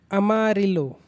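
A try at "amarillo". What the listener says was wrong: फिर तू ल पढ़ रहा है, ल है ही नहीं वो, वही तो मैंने बताया।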